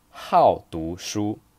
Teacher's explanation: You notice here the tone is the fourth tone because 好, this character, is a polyphone.